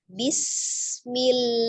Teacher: Huruf sin memiliki sifat al-hams ya, ada udara yang mengalir tapi tidak dipantulkan ketika dia sukun